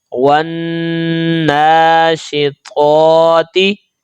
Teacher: نون مشدد کو جب ہم ملا کر پڑھتے ہیں تو گنہ ہوتا ہے، کیونکہ گنہ کی شرط ہے کہ لمبائی ایک الف کے برابر ہوگی.